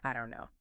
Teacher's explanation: So for I don't know, you say the N sound in don't, then you make that little catch in your throat where the T should be and then you immediately transition to the N and a I don't know. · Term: glottle stop